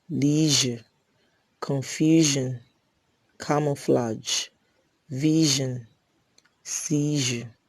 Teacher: j is a voiced palato alveolar fricative